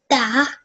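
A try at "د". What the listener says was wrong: It's not a da. A da has 2 dots on top of it. This has only 1.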